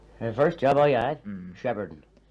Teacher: pronouncing the r in all positions where it appeared historically, and using some kind of approximant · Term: rhotic